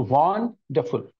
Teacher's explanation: one has a prominence or a stress on the first part of the three-part word